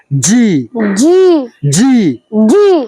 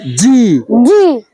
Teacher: জিবার মধ্যভাগ উপরের তালুতে শক্ত করে লাগবে